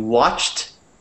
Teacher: the D in a lot of verbs in the past tense becomes like a T